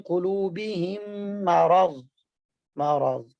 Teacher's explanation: पहली मीम को दूसरी मीम के साथ मिलाकर मुशद्दद अदा करना, और साथ एक अलिफ के बराबर गुन्ना भी करना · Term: इदगाम सगीर मिसलैन